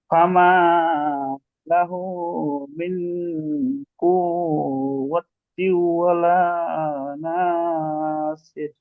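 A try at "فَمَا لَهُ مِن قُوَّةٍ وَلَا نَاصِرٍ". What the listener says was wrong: এখানে কু হবে না তো, কু।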